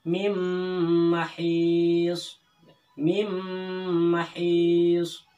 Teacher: nun matinya itu atau nunnya itu seolah-olah tidak ada, ya, dimasukkan ke dalam mim, tetapi harus ditahan